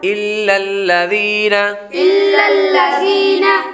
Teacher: یا حروف مدہ میں سے ہے، اس لیے اس کو ایک الف یعنی 2 حرکات کے برابر کھینچ کر پڑھیں گے